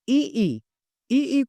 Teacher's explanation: इ ई इ ई को प्रोनंसिएशन करने पर हमारी जीभ तालु को टच होती है तो ये तालव्य में आ जाते हैं।